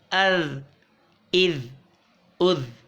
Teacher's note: بزل نہیں آیا، زبان سامنے کے اوپر کے دانتوں کی طرف، کناروں کی طرف لگ رہی ہے، کناروں پر. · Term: ذال